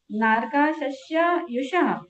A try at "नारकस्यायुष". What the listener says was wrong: बहुवारंभ परिग्रहत्वम नारका, नारक, नारकस्यायुष, सस्या नहीं है, दो स नहीं है, आधा ही स है बस, नारकस्यायुष।